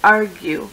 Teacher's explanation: you actually say the U when you say argue where the rest of the words the U is silent